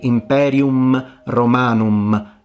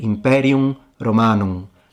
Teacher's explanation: It's ever so slightly pronounced as a nasalized sound. It's not supposed to be an M. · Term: fully nasalized vowel